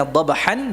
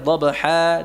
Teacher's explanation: yang asalnya dobhan dibaca panjang dobha dua harakat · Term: Mad Iwat